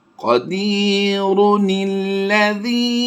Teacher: قدیر، پیش کو بھی پڑھا ہے ہم نے، وقف میں ہم نے اس کو پیش کو جزم سے کنورٹ کیا تھا، لیکن اب ہم اسے وصل کی حالت میں پیش کو بھی پڑھ رہے ہیں، اور اس چھوٹے نون کی زیر کے ساتھ ہم نے لام کے ساتھ اسے ملایا ہے